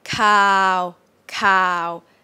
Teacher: flat monotone kind of boring tone there's no um up and down